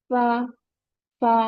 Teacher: Touch the lower lip to the एज of the upper teeth, lower lip को अपर teeth के साथ join करना है। This is the lower lip, and ये अपर teeth के साथ लोअर टीथ को ज्वाइन करना है।